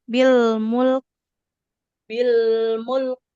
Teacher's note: huruf kafnya dia harus mengalirkan nafas.